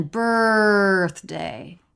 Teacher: no vowel just an R sound held out